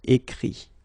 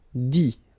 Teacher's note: Remember that phonetically this final T doesn't exist. Okay? So the sound will be only this I.